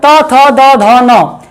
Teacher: दांतों से टच होती है जब हमारी जीभ, तब ये उत्पन्न होते हैं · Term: ता वर्ग